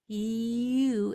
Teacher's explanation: it starts with E and it goes to oo, the long sound. You, and it has an infinite number of micro sounds between the beginning and the end. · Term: diphthong